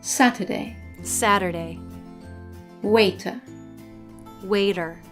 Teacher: in American English when the letter T is in the middle position in a word it sometimes changes to a soft D this happens either when it's between two vowels or when it's